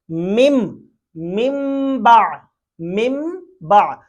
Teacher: تو اب ہم نے جب دیکھا کہ نون ساکن کے بعد با آ گیا تو ہم نے اس نون کو میم سے بدل دیا۔ اس کے اوپر آپ نے دیکھا ہوگا بعض قرآن پاک میں بعض حروف کے اوپر چھوٹا سا میم بھی لکھ دیا جاتا ہے حروف کے اوپر، تو یہ جو نون ہے نا یہ میم میں کنورٹ ہو گیا۔ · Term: اقلاب